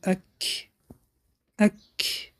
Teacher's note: صفت حمس در حالتی که با ساکن می آید آواز را به بیرون خارج می کنیم